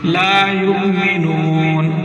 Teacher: جھٹکے سے پڑھنا ہے، حمزہ ساکن ہے